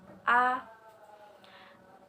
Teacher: vokal rendah atau bawah yang dibentuk apabila rahang bawah diundurkan lagi sejauh-jauhnya